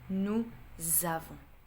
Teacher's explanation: I'm gonna add a Z sound in between. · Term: une liaison